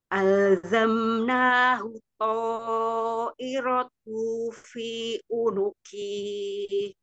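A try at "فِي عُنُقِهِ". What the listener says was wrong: Koki kepanjangan.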